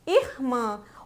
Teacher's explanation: o som está saindo pelo nariz e tanto pela boca